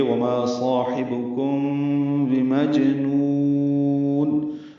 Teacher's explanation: میم ساکن کے بعد با آنے کی وجہ سے اخفاء شفوی ہے، یعنی کم بھی یہ اخفاء شفوی ہے. مجنون میں جیم ساکن پہ قلقلہ ہے، نون کو لمبا کر دیں گے، پورا ملا کے پڑھیں گے. · حبکم صاحبکم ہے، حا اور با معروف طریقے سے جلدی پڑھیں گے، کاف باریک ہے. میم ساکن کے بعد با آنے کی وجہ سے اخفاء شفوی ہے، یعنی کم بھی یہ اخفاء شفوی ہے.